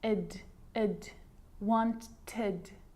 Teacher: So you can hear the ed sound there. Id, wanted. It's its own syllable.